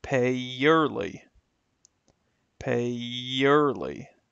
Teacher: even though we don't hear the Y the Y will appear as a Glide